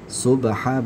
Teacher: subha ba-nya dipantulkan, ya, karena qalqala